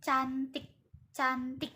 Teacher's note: Nah, bunyi yang dihasilkan dari medium palatal ini adalah ceh ceh. Nah, ceh ini dihasilkan tanpa getaran pita suara yang tak bersuara